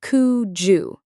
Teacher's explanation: The D at the end of could and the Y at the start of you join together to make a Jew sound. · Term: connected speech